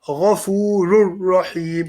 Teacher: Now, since we have a ra, we don't say this tanween. We leave it out. And instead, we join the ra here to this ra with a single dhamma.